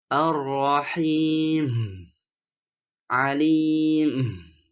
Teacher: terkait dengan huruf mim dan kesalahan pertama adalah menambahkan suara ha di akhir huruf mim sebagai upaya untuk menunjukkan mim tersebut dengan jelas seperti arahim Alim